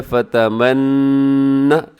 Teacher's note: یہاں نون مشدد ہے، اب یہاں غنہ کیجیے گا، فتمنى، ایسے آواز کو آپ نے ناک میں لے کے جانا ہے